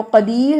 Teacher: را ساکن ما قبل یا ساکن را باریک ہے